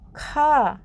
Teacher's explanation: ठीक है, लेकिन यहाँ पर बोलेंगे खा, तो खा में पूरा मुंह खुल जाता है, बहुत सारी सांस बाहर निकलती है। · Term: महाप्राण